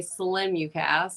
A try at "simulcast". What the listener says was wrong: I thought it was Simu. There's no L.